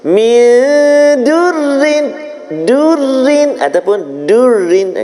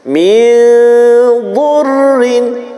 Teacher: tebal dia bunyi huruf dad